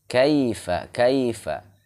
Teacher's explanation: ketika ada iya atau wau sukun sebelumnya berharakat fathah maka di linkan dilembutkan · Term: harfulin